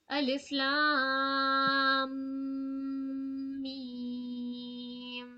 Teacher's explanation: اور الف غنہ کریے. لام میم میں تھوڑا غنہ ناک سے